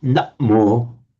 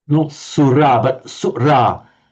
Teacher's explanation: That's not actually a doubling of the M. That's a glottal stop.